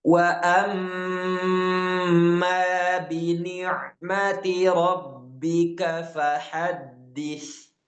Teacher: Dal dan ba dia bukan gunah, hanya tasdid biasa. Maka dibasnya pun tidak terlalu tertahan sebagaimana mim atau nun. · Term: tasydid biasa